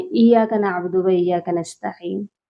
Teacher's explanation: یا مشدد ہے، اس کو ہم نے سختی سے پڑھنا ہے